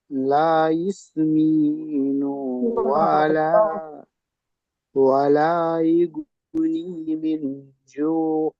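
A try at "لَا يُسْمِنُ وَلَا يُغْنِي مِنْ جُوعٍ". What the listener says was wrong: লা ইসমিনু, নু টান হয়ে যাচ্ছে একটু।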